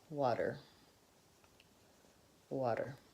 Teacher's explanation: the flap T has no air so the puff of air doesn't come out and it's also voiced so the aspirated tea has no voicing but flap T duh · the quick fix is simply think of that T as being more of a D sound